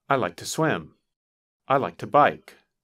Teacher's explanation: When we say it quickly, the word to is pronounced ta